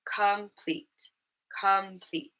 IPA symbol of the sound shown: ə